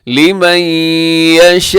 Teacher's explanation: مد متصل، حروف مد حمزہ ایک لفظ میں، اسے آپ 4 سے 5 سیکنڈ تک آپ لمبا کر سکتے ہیں